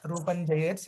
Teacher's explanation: ఆ రూపం జయేత్ అన్నప్పుడు పెదాలు కలపకుండా రూపం జయేత్ చెప్పాలి